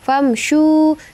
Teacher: mim mati bertemu dengan huruf syin itu izhar syafawi baca jelas